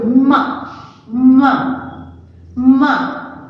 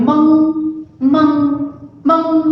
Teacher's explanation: ये जो अनुनासिक है वो नाक और मुंह दोनों की सहायता से बोला जाता है। यानी कि उच्चारण करते समय, शब्द को हमें बोलते समय नाक और मुंह दोनों का उपयोग उस पर होता है, तो वो होगा अनुनासिक।